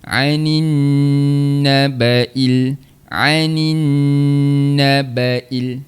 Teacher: Kemudian dengungkan dekat huruf nun sabdu tu. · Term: wajibul ghunnaah